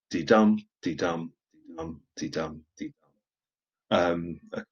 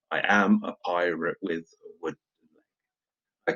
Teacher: So it's 10 beats in a line. They're alternating stressed and unstressed syllables. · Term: iambic pentameter